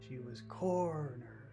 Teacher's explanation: corner is the big word so we focus all of our attention on core because that's the accented syllable